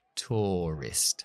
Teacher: A veces ese ua lo convertimos en la o.